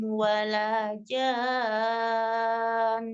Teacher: Panjangkan dulu 6, kemudian sukunkan ke nun, tapi ada gunnahnya.